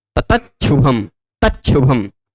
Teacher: च को च के कारण फिर श को छ कर देते